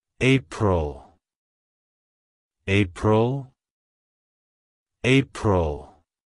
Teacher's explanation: To pronounce it correctly, emphasize the first syllable EY and the second syllable pruhl.